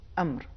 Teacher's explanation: لفظ امر میں پہلا حرف حمزہ ہے، یہ حروف شدت میں سے ہے، لہذا تلفظ کے وقت اس کو ہم جھٹکے کے ساتھ ادا کریں گے